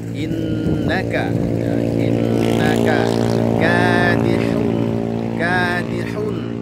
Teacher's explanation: Pembacanya adalah ikhfa hakiki. Innaka ada nun bertasydid, diberikan gunnah di situ.